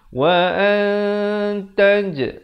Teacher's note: Jadi di sini bunyinya ikhfa. Jadi kita samarkan bunyi nun di antara bunyi ta dengan kadar 2 harakat.